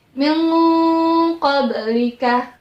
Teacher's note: nun matinya bertemu dengan huruf ko samar-samar dan siap-siap membentuk huruf ko yang tebal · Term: huruf tebal